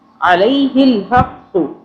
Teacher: عین کو حلق سے پڑھنا ہے، الف نہیں پڑھنا، الف کی آواز میں نہیں پڑھنا